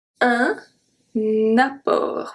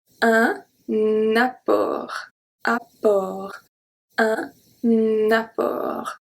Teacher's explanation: The two P pronounce P, we just see that. And then the O is a closed O, and we don't pronounce the T.